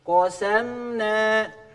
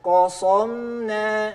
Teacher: Kita baca sinnya jadi tebal, naik suaranya. Qasam, qasam siga shad.